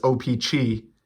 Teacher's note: pronounce it as O-Pee-Chee and sort of focus on that third syllable